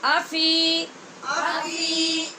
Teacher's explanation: یہاں حمزہ کو لمبا نہیں کرنا اور فی کو لمبا کرنا ہے، کیونکہ فا کے بعد یا مدہ ہے اور حمزہ کے اوپر صرف پڑی زبر ہے، اس لیے میں